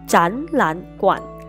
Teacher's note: 前面两个字变读第二声，后面的一个字保持原调第三声 · 如果前两个字成词，前两个字都读阳平第二声，第三个字保留原调。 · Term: 三个赏声的变调